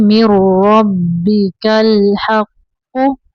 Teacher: मीम को रा के अंदर मिलाएंगे।